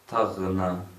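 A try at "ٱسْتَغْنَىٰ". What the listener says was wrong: Long vowel at the end.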